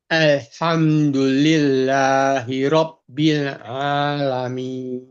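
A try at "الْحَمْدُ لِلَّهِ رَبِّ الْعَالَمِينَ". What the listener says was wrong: Ya, A-nya kurang kuat. A bukan A. A di tengah sini.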